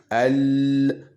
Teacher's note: le bord de la langue qui vient appuyer sur le palais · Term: lam